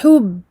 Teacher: je bloque en gardant les lèvres fermées. Je ne fais pas de qalqala ici. Encore une fois, parce que je suis en plein milieu de la shadda.